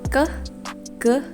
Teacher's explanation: lidah belakang itu kayak nempel soft pelet gitu kan cuman kan nggak nempel seluruhnya langsung ke ke tengah